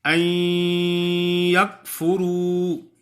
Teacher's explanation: ای یکفروا نہیں پڑھیں گے، ای کہ نون کی کوئی صفت باقی نہ رہے تو ایک حرف کم ہو جائے گا. نہیں، نون کی آواز تو نہیں آئے گی لیکن اس کی جو غننے والی صفت ہے وہ باقی ہوگی، ناک سے آواز آئے گی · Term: ادغام ناقص